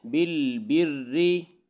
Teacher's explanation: یہاں را کے نیچے زیر ہے تو را کو باریک پڑھیں گے